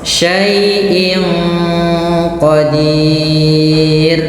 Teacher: kita baca dengan bacaan ikhfa hakiki, yaitu tanwinnya disamarkan dengan huruf qaf